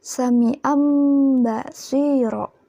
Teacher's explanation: nun mati atau sukun itu tiba-tiba kok berubah jadi mim, itu iklab namanya